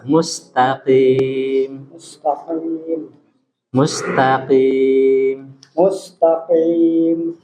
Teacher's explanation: huruf q jangan keluar udara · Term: Huruf qaf